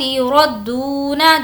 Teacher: دو کو کھینچیں گے، واو مدہ